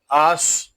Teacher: حمزہ صاد زبر آس، یہاں صاد یہ حروف مستعلیہ میں سے ہے، اس کو پر یعنی موٹا پڑھیں گے.